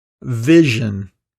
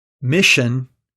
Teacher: our vowel length rule the zh is a voiced consonant so the vowel sound before the zh is typically longer than before its voiceless counterpart the consonant sound sh